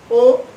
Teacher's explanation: অ এটিকে যখন আমরা একটু চাপিয়ে বলি ও তখন কিন্তু ঠোটটা একটু চেপে যাচ্ছে। এই ওটাই হচ্ছে অ এর সংবৃত রূপ।